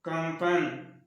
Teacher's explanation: कंपन में म का उच्चारण हो रहा है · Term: नासिक्य वर्ण